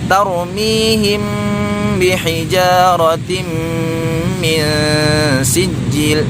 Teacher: Di situ ada tanwin berjumpa dengan huruf mim, hukumnya idgham bi gunnah ya, harus didengungkan.